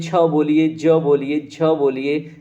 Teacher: लेकिन आप च से लेके झ तक देखिए, आपका जीभ जाके तालु पे टच हो रहा है